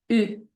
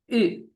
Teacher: It is a rounded U sound unique to French. You pronounce with pursed lips.